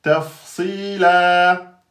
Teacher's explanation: On enlève une voyelle et il nous reste un fatha alif et donc on a 2 temps. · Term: prolongation